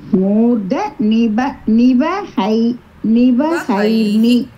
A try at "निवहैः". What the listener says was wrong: विसर्गम is there, no? ஹைஹி ஹைக்கு அப்புறம் விசர்க்கம், அதனால ஹைஹி அப்படியே போகும். n சவுண்ட் நா சவுண்ட் வராது. நிவஹைர்ஹி. if you want to say continuously visargasya repah varum.